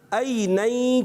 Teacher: حمزہ جو ہے حلق کے نیچے والے حصے سے ادا ہوتا ہے